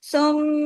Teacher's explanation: باریک حروف ہے، میم پہ تشدید ہے، میم پہ غنہ ہوگا